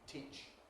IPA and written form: ˈtiːʧ (teach)